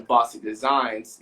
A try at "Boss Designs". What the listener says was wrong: It's pronounced Boss Designs. Yes, you kept saying Bossy, and I'm like,